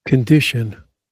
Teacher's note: Condition, stress on the second syllable, condition.